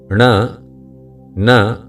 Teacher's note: उच्चारण करते समय नासिक में कंपन होता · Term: अनुनासिक